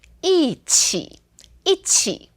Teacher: when it's paired with other tones, then we speak it as a fourth tone